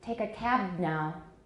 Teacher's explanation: in take a cab now, you can hear the pause is much shorter. We've got voicing in there and it's much shorter.